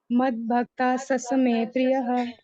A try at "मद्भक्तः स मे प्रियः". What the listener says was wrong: जी प्रभु जी, दो स का साउंड था। बट हाँ ठीक है, प्रिय ठीक था, शायद ठीक था।